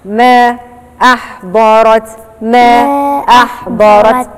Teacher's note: المنفصل اللي هو حرف المد في كلمة والهمزة في كلمة تانية، فأنا بقصر ما بزودش عن حركتين.